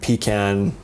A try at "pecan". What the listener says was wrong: Not pecan. Pecan is what you pee in a can. So it's a pecan.